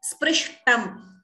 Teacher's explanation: It is not sprushtam. It's not ukara. It is r.